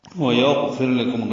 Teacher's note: غین ساکن پر ہے اور اس پہ اظہار ہے، فا کو را سے ملائیں گے، را باریک پڑھا جائے گا کیونکہ را ساکن سے پہلے زیر ہے. لام جلدی سے پڑھیں گے، باریک ہے، کاف باریک ہے، میم ساکن پہ اظہار شفوی ہے.